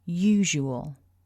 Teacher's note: this is a 3-syllable word and that we stress syllable 1